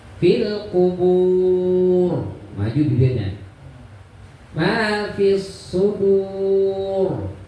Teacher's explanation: Dur itu tafkhim mufakham, maka bibirnya maju.